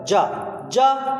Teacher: ज अल्प प्राण ध्वनि है